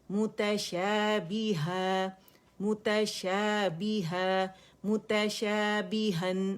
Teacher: تنوین الف مدہ میں بدل جائے گی، 2 کاؤنٹ کے لیے آواز اوپر جائے گی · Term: مد عوض